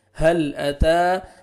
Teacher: تا کو باریک پڑھیں گے، طا میں ساؤنڈ نہیں جانا چاہیے، تا اور طا میں ڈفرنس ہونا چاہیے ادائیگی میں ۔ ہل اتا، تا کو فتحہ الف صغیرہ ہے، الف مدہ